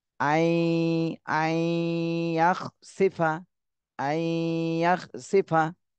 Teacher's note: নুন সাকিনের পরে ইদগামে বা গুন্নার হরফ এসেছে, এই জন্য গুন্না সহ মিলাতে হবে। আই আইয়াখসিফা আইয়াখসিফা।